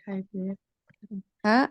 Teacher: ha itu tenggorokan bagian bawah. Iya. Aqsal halqi.